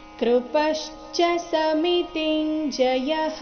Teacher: ಎರಡನೇ ಚರಣದಲ್ಲಿ ಎಲ್ಲವೂ ರಸ್ವ ಆಗಿದೆ ಸೋ ಎಲ್ಲಿಯೂ ನಿಲ್ಲಬಾರದು